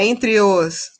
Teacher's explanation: o e final da palavra entre se junta com a vogal seguinte, porque a palavra em seguida já vem uma vogal, então a gente junta.